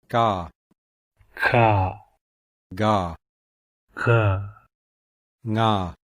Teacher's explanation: The gutturals are formed at the back of the mouth, and these are also called velars.